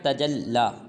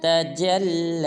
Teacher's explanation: بعض مسلمان پڑھ دیتے ہیں تجلی، یہ بالکل غلط ہے۔ لام کو ایک الف مقدار لمبا کرنا ہے